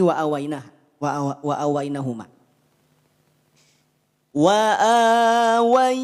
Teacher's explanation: ada kadar dengung yang masuk ke rongga hidung suara yang masuk ke rongga hidung